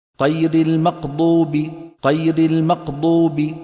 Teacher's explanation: خلط صوت الغين بالقاف